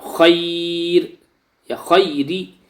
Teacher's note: را کے نیچے زیر ہے تو را باریک ہوگی